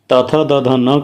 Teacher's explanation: त थ द ध न कहने पे दंत स्थान पर जिह्वा स्पर्श कर रही है